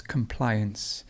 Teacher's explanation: so the stress goes in the middle there's compliance and to comply the stress goes moves to the